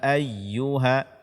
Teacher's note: Ayuha ini tidak boleh kurang daripada empat harakat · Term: Mad Jaiz munfasil